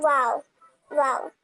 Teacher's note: दोनों होठों को गोल करने पर हरफे वाव की अदायगी होगी। दोनों होठों को गोल करने पर वाओ वाओ जब आप वाओ कहेंगे ना फ़ौरन से दोनों होठ क्या होते हैं ना वो गोल हो जाते हैं। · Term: वाव का मखरज